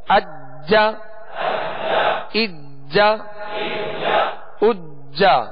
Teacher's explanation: حروف قلقلہ میں سے. اس پر تشدید ہے لہذا خوب جماؤں کے ساتھ ادا کریں گے